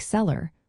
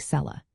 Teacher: Similarly, a word like sellar where the r is at the end of the syllable will often be pronounced without the r sound, almost like cella.